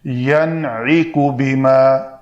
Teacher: نون ساکن کا عین کی وجہ سے اظہار کیا کیونکہ عین حروف حلقی میں سے ہے